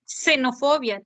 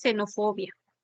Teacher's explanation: con las palabras que comienzan con x el sonido que le corresponde es de la s